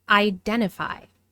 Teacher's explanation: it's very common in American English to drop the T after the N in an unstressed syllable.